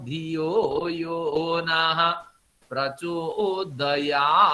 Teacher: तो प्रचोदयात में त का उच्चारण नहीं होगा, या का उच्चारण होगा।